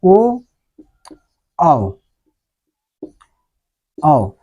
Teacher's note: ओ औ बोलने पर गोला बन रहा हमारा ओठ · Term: वृत्त मुखी स्वर